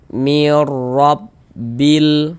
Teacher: Ah ini ya yang baris di atasnya harakat fathah tanda baca fathah. Maka huruf ro dibaca tabkhim dibaca tebal. Ah, tebalkan huruf rnya.